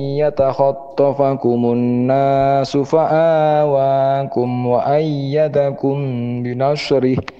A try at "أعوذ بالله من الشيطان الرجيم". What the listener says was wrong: Ya, perhatikan pertama di a'udzubillahi minasyaitonirrajim ya, di ta'awudnya tadi kurang sempurna di ya-nya. Jadi syaiton berarti dibacanya syaiton. Harusnya kan jadi i ya, syaiton. Belum bacanya syai. Kan kurang sempurna. harusnya kan syaiton.